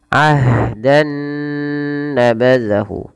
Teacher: Maka di sini awalnya bunyi n, ketemu dengan n yang selanjutnya nun, maka caranya masukkan nun yang pertama kepada nun yang kedua, maka diidghamkan, maka dinamakan dengan idgham bi gunnah